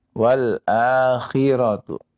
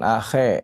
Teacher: Kha kasra ya. Jangan akhe ya, akhiratu.